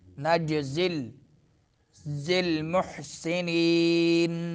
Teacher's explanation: नज में जीम में कलकला होगा